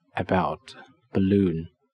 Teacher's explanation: it even has a name it's called schwa is pronounced uh the mouth is a neutral position in this unstressed vowel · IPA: ə